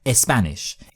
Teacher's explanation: Spanish people can't pronounce a spah sound without a vowel at the start